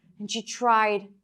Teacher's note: So tried is longer than and she that are reduced.